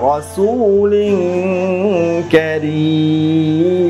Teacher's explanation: ইখফা গুন্নাহ করে অর্থাৎ নাকের ভিতর লুকিয়ে গুন্নাহ করে পড়তে হবে